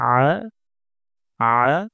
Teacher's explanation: আইন গলার মাঝখান থেকে উচ্চারণ করতে হবে